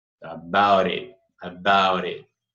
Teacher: Ele vai ter um som meio entre D e R, né? About it. E o T do it, você pode engolir. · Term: flat